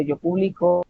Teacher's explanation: estamos haciendo la mayor fuerza de voz en su segunda sílaba, es decir, en la sílaba de en medio